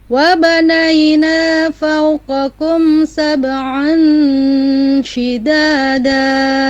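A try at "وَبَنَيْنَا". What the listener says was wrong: Ya, yang wabanai itu nai ya, itu langsung bunyi i ya. Tidak wabanaina naina, tapi wabanaina ya. Naina wabanaina fawqakum. Ya, nai tadi masih bunyinya nai ya, ya harusnya i, nai gitu.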